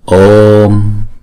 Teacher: Chữ O là deep tone, chúng ta đọc hai nhịp.